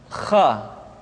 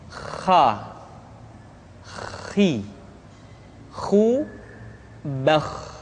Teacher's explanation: Kha dikeluarkan dari pangkal tenggorokan Kha pangkal tenggorokan diucapkan dengan mengalir nafas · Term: huruf Kha